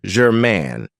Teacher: this has 2 syllables, and the stress is on the second syllable